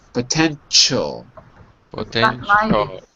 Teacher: It's not a sh. It's a ch.